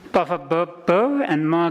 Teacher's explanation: come from the lips touching each other